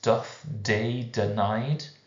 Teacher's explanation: You've got the plosive sounds, the dental plosives